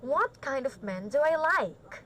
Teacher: the intonation in the end is high always remember that